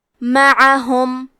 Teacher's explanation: کلمت معہم میں میم پہ اور عین پہ زبر ہے اور ہا پہ پیش ہے تو ہم یہ تینوں حرکات کو ظاہر کریں گے اور عین کی ادائیگی حلق کے درمیان والے حصے سے ہے